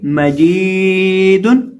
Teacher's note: अब इस लफ्ज के अंदर हमने जीम को खींचना है, जीम को एक अलिफ के बराबर लंबा करके पढ़ना है। क्यों? क्योंकि जीम के साथ याए मद्दा है।